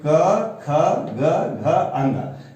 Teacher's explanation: कवर्ग का उच्चारण कंठ से होता है